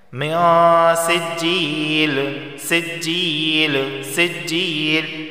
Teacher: یہاں نون ساکن کے بعد سین آیا ہے، اور سین حروف اخفا میں سے ہے، اخفا والا غنہ ہوگا، یعنی زبان کی نوک اوپر کے تالو سے نہیں لگے گی، اور ایک الف کے برابر یہاں غنہ کریں گے